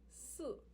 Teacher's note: Si, the 4th descending tone.